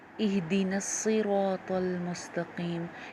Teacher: صاد موٹا پڑا جاتا ہے ہمیشہ، طا ہمیشہ موٹی پڑی جاتی ہے، قاف ہمیشہ موٹا پڑا جاتا ہے. ان کو آپ نے موٹا کرنا ہے.